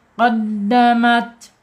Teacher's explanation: ujung lidah menyentuh pangkal gigi dari atas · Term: huruf ta